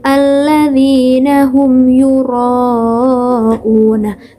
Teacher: ketika kita mengucapkan huruf ro tersebut nah lidah kita ini akan bergetar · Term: taqrir